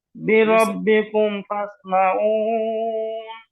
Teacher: মিম সুকুনের পরে ফা আসলে গুন্না নাই , নাই শুধু দুইটা হরফ আসলে গুন্না আছে, মিম আর বা।